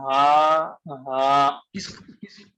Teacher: اس کو حلق سے نہیں ہا نکلنا ہے، سینے سے نکلنا ہے